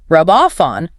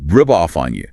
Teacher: So, of hearing three distinct separate words, rub off on, your ear receives a single trisyllabic block of uninterrupted sound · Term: connected speech